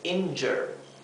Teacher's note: esta U se pronuncia como un sonido intermedio entre una E y una A, o sea, es injure.